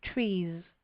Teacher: trees ends with s but we create a voiced s so it sounds almost like a zed